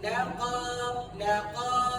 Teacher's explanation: Lam sikit dia. Laqa, qa tu pastikan buka sikit lagi daripada lam.